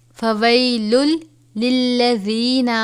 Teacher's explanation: فویل، اب یہاں پر فویل لفظ ہے لیکن تنوین کے بعد حروف یرملون میں سے لام مشدد ہے تو غنہ نہیں کریں گے، را اور لام ان دونوں پر غنہ نہیں ہوتا، باقی 4 حروف پر غنہ ہوتا ہے۔